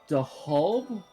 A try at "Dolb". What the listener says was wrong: The H is basically silent, so it's just Dolb. Dolb.